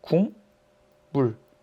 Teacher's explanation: 기역과 같은 위치에서 나는 울림소리는 이응이네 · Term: 비음화